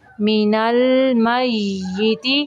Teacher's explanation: یا مشدد ہے، میم کو یا کے اندر تھوڑی دیر ملائیں گے